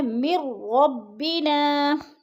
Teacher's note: مر میم کو را کے ساتھ ملا کے پڑھنا ہے، درمیان والا نون ساکن نہیں پڑھا جائے گا، لکھنے میں آتا ہے اور پڑھنے میں نہیں آتا۔